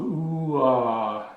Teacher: you'll hear an oo phoneme, as in boot, ooh, and it transitions into an ah phoneme, as in father.